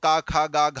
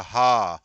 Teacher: क ख ग घ हमने बोला तो घर्षण नहीं हो रहा है लेकिन जब हा बोला हा तो हवा घर्षण करते हुए निकल रही है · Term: काकल ध्वनि